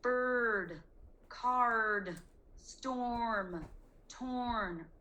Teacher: You really hear that R. It's like really loud and bossy, so it's kind of hard to hear the vowel that comes before it. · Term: bossy R